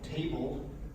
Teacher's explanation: There's hidden phonemes sometimes, so table, going from the b to the ul sound, you add that schwa in there just as a matter of where your tongue is, but there's nothing that aligns with that schwa.